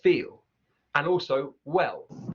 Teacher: really pronouncing that dark L as you would in a received pronunciation. So it's feel, and also well.